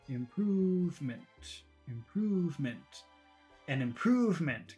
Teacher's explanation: So the word improvement is short, long, short.